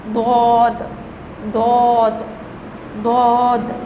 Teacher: The tongue has to be touched with the gum of the upper teeth.